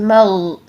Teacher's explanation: غین کی آواز کو ہلانا نہیں ہے بلکہ آواز کو کنٹینیو رکھیں، اس کو جاری رکھیں، کیسے مغ، اس طریقے سے مغ نہیں کریں گے اور گاف کی ساؤنڈ پہ نہیں لے کر آئیں گے، ٹھیک ہے۔